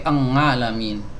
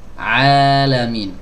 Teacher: Huruf ain keluar dari tenggorokan bagian tengah, ya, tenggorokan bagian tengah, dan dia, ya, tidak melibatkan hidung, ya. Jadi jangan alamin, nggak ada kaitannya dengan hidung, ya.